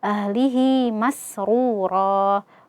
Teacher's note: runya ee dibaca tebal karena dia dammah. Kemudian ee ro kita wakaf di ro.